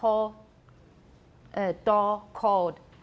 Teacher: in Taiwan English, very often you make it into a monophthong.